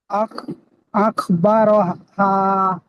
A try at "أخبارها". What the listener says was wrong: আখবার টান হবে মানে